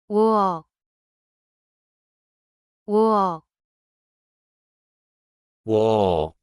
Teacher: Start with rounded lips for u and quickly move to the eo position.